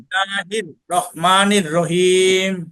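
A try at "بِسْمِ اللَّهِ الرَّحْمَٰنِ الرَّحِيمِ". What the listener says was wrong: হ্যাঁ, মাশাআল্লাহ, দুই জায়গাতেই নির রহিম।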